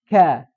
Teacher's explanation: lidahnya menempel ke langit-langit atas tidak ada celah untuk udara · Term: syiddah